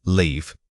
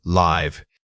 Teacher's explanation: Remember that the vowel in leave is held much longer and requires a more stretched mouth shape than the shorter, more contained sound of live. Focus on sustaining the tone. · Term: long E sound